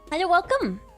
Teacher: There's a vocal fry happening right now.